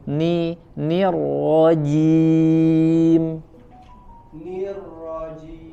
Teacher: Ni-nya tipis dulu, ni, rahangnya diturunkan ke bawah.